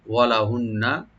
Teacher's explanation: মেয়েরা পাবে, মহিলারা, ওয়ালাহুন্না, ওয়া ওপেন রাখবেন, লাম ওপেন থাকবে, আর নুন মুসাদ্দাদ এখানে ওয়াজিব গুণা করে , ওয়াজিব গুণা করে রার সাথে আমরা মিলাবো, ওয়ালাহুন্না, এবং তাদের